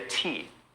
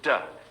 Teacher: the only difference between is that the t doesn't use the voice and the d does use the voice